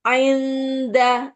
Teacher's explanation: nun sukun ketemu dal samar